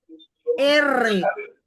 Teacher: Entonces, entonces los fonemas vibrantes o que se arrastran son los que al pronunciarlos el aire ingresa y causa una vibración en la punta de la lengua